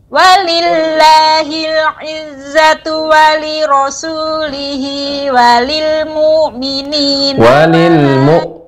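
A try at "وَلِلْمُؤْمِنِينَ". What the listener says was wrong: Walil hamzah jelas di ibu. Walil mu'minina.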